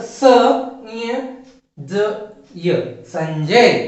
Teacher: अनुस्वार के बाद में आने वाला व्यंजन है ज, अनुस्वार के बाद में आने वाला व्यंजन है ज, और ज यह च वर्ग का तीसरा व्यंजन है, च, छ, ज। तो ज यह च वर्ग का तीसरा व्यंजन है, और इसीलिए अनुस्वार का उच्चारण कैसे होगा, अनुस्वार का उच्चारण ञ की तरह होगा। तो इसीलिए यहां पर स ञ ज य, संजय।